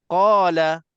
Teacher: Qala ini dah kira mat 2 harakat.